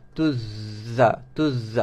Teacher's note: Hujung lidah sentuh di belakang gigi gunting atas, gigi kacip atas. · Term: bunyi lebah, safir